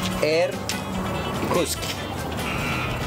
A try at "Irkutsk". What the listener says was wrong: Irkutsk. Because there is a T. Irkutsk.